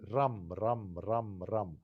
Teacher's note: that R is a Germanic R. It's a stronger, it's a roll. It's not rolled like in French, and it's not softened like in English. It's a powerful R.